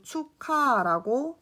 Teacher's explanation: 축의 종성 기역과 하의 초성 히읗이 만난 거예요. 그래서 기역과 히읗이 축약되어 키읔으로 발음이 된 거죠. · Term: 거센 소리